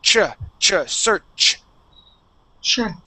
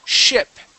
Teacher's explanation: But with a ch, okay, it stops. The airflow stops. Okay. It's like putting on the brakes. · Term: ch sound